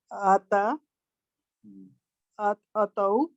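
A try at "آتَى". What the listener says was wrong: अलिफ की आवाज नरमी करें।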